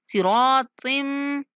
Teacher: तिम पर गुन्ना करेंगे, ठीक है। नाक में आवाज को महसूस करेंगे। उसके बाद कीम, काफ को खींचेंगे। · स्वात रा तो तीनों मोटे पढ़ेंगे।